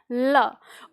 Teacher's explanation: और जब वो प्रेशर से बाहर निकलती है तो जो हमारी जीभ है, मतलब ये जो दोनों हिस्सा है, इसके इन दोनों हिस्से के साइड से पास से हवा होके गुजरती है। तो हवा पास से होके गुजरती है तो इसलिए इसको पार्श्विक कह दिया गया